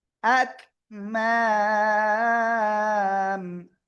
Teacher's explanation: থেমে পড়লে কি হবে, আকমাম, তিন আলিফ টান হবে